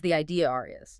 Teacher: even if there is no R in the spelling at all, the mouth will insert one if a word ending in a neutral vowel meets another vowel. Like the idea is becomes the idea R is. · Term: intrusive R